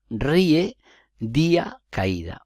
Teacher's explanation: siguen las reglas generales de acentuación la tercera posibilidad es que se encuentre una vocal abierta átona y una cerrada tónica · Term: iato